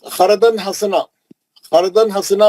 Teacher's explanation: اور دوسرا جو ہے خردن حسنا، فردن حسنا میں جو ہے تنوین کے بعد ہا ہے، اخفا کرنے کی ضرورت نہیں ہے، اظہار ہے